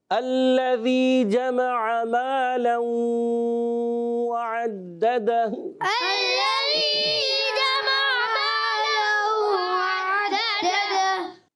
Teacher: لام تشدید والا ہے، مشدد ہے، ذرا رک کر ادا کریں گے، اور ذال کی ادائیگی کلیئر کریں گے، اس کو زا سے نہیں بدلنا۔